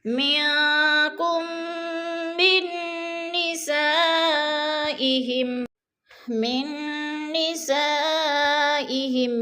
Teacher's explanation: کم پہ ادغام شفی ہو رہا ہے، میم ساکن کے بعد میم مشدد ہے تو ادھر ادغام شفی کریں گے سختی سے، یعنی جمع کر پڑھیں گے. منکم من نسائہم، من نسائہم، من میم کو نون کے ساتھ ملا کر سختی سے جمع کر یعنی شد کر کے پڑھیں گے اور درمیان والا نون ساکن نہیں پڑھا جائے گا.